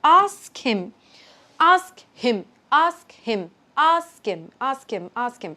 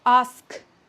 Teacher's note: So, the thing with the K is that the K is sort of aspirated in the end.